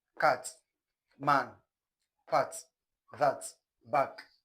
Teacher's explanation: The a sound is simply described as low front short vowel sound. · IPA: /æ/